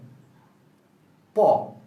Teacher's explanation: প বলতে গেলে আমাদের প্রথমেই আমাদের 2 ঠোঁটকে আটকে দিতে হয়। প আটকে দিয়ে তারপর আমাদের উচ্চারণ করতে হয়। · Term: স্পর্শ ব্যঞ্জন